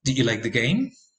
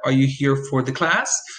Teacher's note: that's rising intonation there is a rise at the end of your sentence